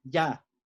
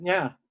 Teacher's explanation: toda la vocal aquí, el tono, se mantiene siempre en la misma altura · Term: tono alto